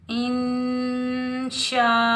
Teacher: शा कलमा एक है, उसी कलमे में असली हमज़ा आ रहा है, तो मद्दे मुत्तसिल वाजिब को हम 5 अलिफ की मिकदार में खींच कर अदा करेंगे।